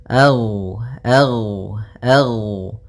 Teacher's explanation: Jadi ketika melafalkan ghain, nafas kita tertahan, suara kita dialirkan.